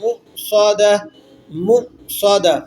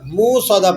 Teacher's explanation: حمزہ آ جاتا ہے تو یہاں پر کیا ہوتا ہے، ایک جھرکنگ ساؤنڈ، ایک جھٹکے کی سی آواز پیدا ہوتی ہے، تو وہ آپ نے یہاں پیدا کرنی ہے.